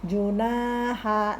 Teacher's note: na panjang 2 harokat karena fathahnya disertai dengan alif.